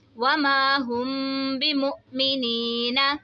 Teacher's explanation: میم ساکن کے بعد حرف با رہے تو یہاں پہ اخفاء شفوی کا قاعدہ ہوگا، یعنی ہم نے یہاں پر غنہ کر کے پڑھنا ہے. اور یہ ساکن حمزہ ہے، ساکن حمزہ کو ہمیشہ جھٹکے سے پڑھا جاتا ہے.